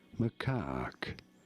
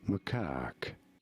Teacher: You do want to stress on the second syllable